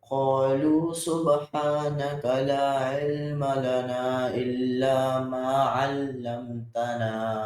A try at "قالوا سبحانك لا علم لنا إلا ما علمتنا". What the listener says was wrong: You have to make the ayn deeper from the middle of your throat. قالوا سبحانك لا علم لنا إلا ما علمتنا.